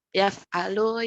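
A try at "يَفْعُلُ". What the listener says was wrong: Yaf'ulu, yaf'ulu. Ainnya dikasih sama ya, dhamma ya, yaf'ulu.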